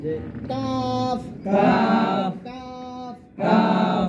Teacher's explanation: কাফ, জিহ্বার গোড়া থেকে একটু আগে বাড়াই যায়, তার বরাবর উপরে তার সঙ্গে লাগাই যায়।